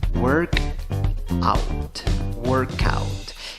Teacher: La primera palabra, work, la pronuncias no con O, sino con schwa, la que no suena ni A, ni E, ni O. En la segunda palabra, aunque tienes una O, en la pronunciación tienes una A.